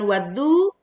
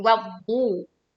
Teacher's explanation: bunyi alif-lam tidak terdengar karena langsung menyatu dengan 'dad'. Tebalkan saat kita membaca tashdid.